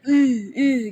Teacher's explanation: makhraj huruf ha itu adalah dari tenggorokan jadi Keluarnya tipis